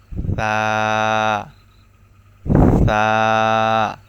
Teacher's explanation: সা এর উচ্চারণ হলো জিহ্বার আগা সামনের উপরের দুই দাঁতের আগার সঙ্গে লাগিয়ে